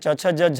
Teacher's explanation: ઈકાર ચ વર્ગ એટલે કે ચ છ જ ઝ ય યકાર તથા શકાર એમનું તાલુ સ્થાન ગણવામાં આવે છે